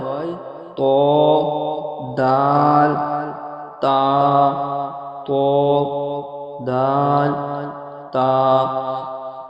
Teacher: 11 নম্বর মাখরাজ জিবের আগা এবং সামনে উপরে দাঁতের গোড়া জিবের আগা এবং সামনে উপরে দুই দাঁতের গোড়া সাথে লাগিয়ে উচ্চারিত হয়